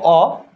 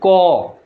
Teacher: যখন আমি অ বলছি কোথাও কিন্তু কোনো প্রকার বাধাপ্রাপ্ত হচ্ছে না, অর্থাৎ বাকযন্ত্রের প্রত্যেকটা অঙ্গ প্রত্যঙ্গ সেটার কোনো প্রকার বাধাপ্রাপ্ত হচ্ছে না। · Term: স্বরধ্বনি